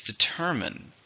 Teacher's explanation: How many syllables are in determine? 3. Stress on the second one.